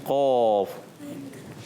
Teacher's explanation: زبان کی جڑ اور تالو کے نرم حصے سے قاف ادا ہوتا ہے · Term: قاف کا مخرج